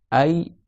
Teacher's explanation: je vois que le milieu de ma langue est monté vers le haut · c'est le fait que le milieu de la langue il est monté sur le palais